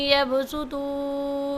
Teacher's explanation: ان یبسطوا کے با پر قلقلہ کریں گے اور طوا کو موٹی آواز سے پڑھیں گے۔